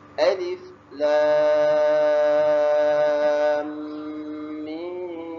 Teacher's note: Mim sukun bertemu dengan mim. Maka kita dengungkan di sini itu idgham mislain ataupun idgham mim. Sebab itu kita dengung.